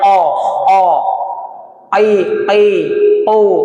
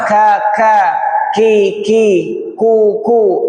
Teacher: Yang pangkal lidah kaf. Qof dengan kaf. Cuman bedanya qof ini pangkal dalam. Makanya lebih berat suaranya.